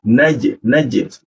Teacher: posisi ja itu di tengah lidah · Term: huruf ja